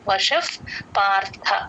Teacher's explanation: ఉంటారు. రా త్రియాగమే వషఫ్ ష పక్కన ఉన్న విసర్గ ఎఫ్ సౌండ్ అండి ప ముందు ఎప్పుడు విసర్గ వచ్చినా ఎఫ్ లాగే చెప్తాము